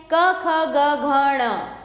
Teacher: इसका जो उच्चारण स्थान है मतलब ये कहां से निकल रहे हैं कंठ से